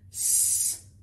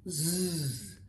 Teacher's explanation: When you voice it, it becomes z